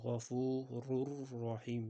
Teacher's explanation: g'unnas qilib tashdid bilan ya'ni ikkita ro qilib o'qiymiz. Bu joyda o'qilishi g'ofurur rohim.